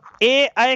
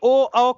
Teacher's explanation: ए अय कंठ तालव्य ध्वनियां हैं, जबकि ओ औ कंठोष्ठ ध्वनियां हैं